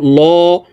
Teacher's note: এই লামকে ল অর্থাৎ মোটা করিয়া পড়তে হবে কারণ আল্লাহ শব্দের আগের হরফে জবর অথবা পেশ হইলে এই লামকে